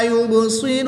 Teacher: تنوین میں ادغام بلا غنہ ہوگا، با پہ کلکلا کر کے پڑھیں گے. صاد کو پوٹ پڑھیں گے، را کو بھی پوٹ پڑھیں گے. وقف کی حالت میں یہاں پر مد عارض ہوگی، 2 یا اڑائی الف تک کھینچ کر پڑھیں گے.